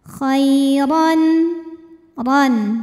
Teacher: Huruf ra dibunyikan secara tafkhim karena ra berbaris fathah tanwin, maka cara membacanya ditebalkan, pangkal lidah kita angkat.